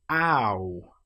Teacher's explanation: We start with a. We end with oo.